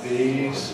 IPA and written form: ðiːz (these)